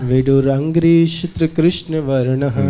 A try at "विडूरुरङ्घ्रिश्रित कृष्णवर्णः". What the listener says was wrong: विडूरुरंग। देखिए इसका जो टेस्ट है वो रुरु बोलने में अलग होता है। रुरु छोड़ दिया आपने। विडूरुरंघ्रि। हाँ हाँ, विडूरुरंघ्रि।